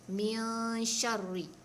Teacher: Kalau min syarri, dia jadi izhar sebab kita sebutan yang jelas, nun jelas, shin jelas, itu tak boleh. Dia ikhfa tengah-tengah, bukan izhar dan bukan idgham.